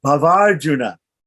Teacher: The two short A's, one at the end and one at the beginning of the next word, come together and make Bhavarjuna.